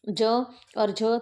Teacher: ज और झ तो ये आपका जो है च वर्ग में आता है। च वर्ग मतलब तालु में आता है।